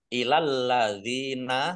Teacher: lamnya dibaca dobel ada tasdidnya Dal kasroh Ya Sukun Mad thii panjang dua harakat alladzina kata